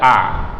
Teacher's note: A-nya itu huruf hamzah. Hamzah tuh buka aja mulut dengan lebar, A. Jadi suaranya jangan sampai lari ke hidung. Jadi A, karena huruf hamzah itu tempat keluar hurufnya adalah tenggorokan kita di sini.